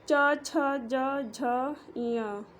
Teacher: तो इसे बोलने पे तालु में टच होता है, इसलिए इसे तालु व्यंजन बोलते हैं।